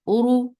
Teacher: ra is heavy for the circle lips, and the sound will be short.